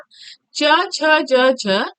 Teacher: च छ ज झ छोटी ई बड़ी ई य और स इसका तालु से होता है उच्चारण स्थान